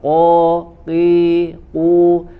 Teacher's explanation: Perhatikan huruf qaf, ya tidak ada angin yang keluar seperti huruf kaf